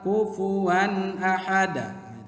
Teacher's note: Harus kufuwan a, wan harus jelas suara tanwinnya. Kemudian pendek